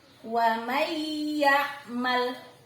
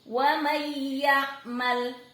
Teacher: Suara N hilang, melebur ke huruf yang ada di depannya, yakni suara huruf ya. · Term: idgham bi gunnah